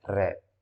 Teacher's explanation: इसी की तरह जो है व्यंजन जो र, लुंठित मैंने पीछे बताया र, और पार्श्विक का भी ध्यान रखेंगे, पार्श्विक यानी कि ल, बगल से हवा निकलती है, और लुंठित यानी कि जीभ क्या होती है, लुढ़कती है एक तरीके से, र